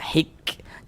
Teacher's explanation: Kemudian di sini huruf kaf sukun, kita baca hik. Tapi jangan dibaca hik kok, jangan mantul ya. Huruf kaf itu bukan huruf qalqalah, bukan. Hik. Jadi ada napas yang mengalir ketika kita mengucapkannya, hik.